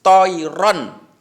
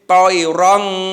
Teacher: idhar halqi itu adalah bacaan yang dibaca jelas. Jadi tanwinnya itu harus dibaca jelas, tidak boleh samar, juga tidak boleh dengung.